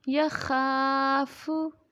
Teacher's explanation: خا حروف مدہ ہے، ایک الف کی مقدار تک لمبا کر کے پڑھیں گے